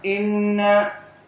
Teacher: Inna hukmun nun al-musyaddadah. Maka dia gunnah.